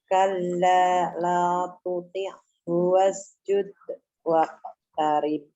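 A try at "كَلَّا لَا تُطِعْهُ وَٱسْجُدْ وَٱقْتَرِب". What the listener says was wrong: Jangan putus-putus. Sambung semua. La tuti'hu wasjud waqtarib. Dia kolkolah sugro tuh bukannya nggak ada suaranya. Bukan berarti sugro kecil, suaranya kecil malah hilang ya. Bukan seperti itu.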